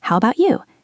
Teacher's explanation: English is a musical language. When we ask the return question, our voice usually goes up at the end.